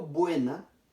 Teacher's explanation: Cuando digo buena, en esta sílaba estoy pronunciando las dos vocales. Por tanto, ahí sí notamos que hay un diptongo.